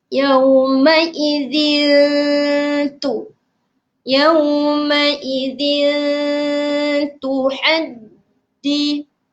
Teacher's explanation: Okey, jadi cara bacaan ni sama juga. Kita kena sembunyikan sembunyikan tanwin tersebut dan kita melebihkan sedikit bacaan kita pada huruf ta. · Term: ikhfa hakiki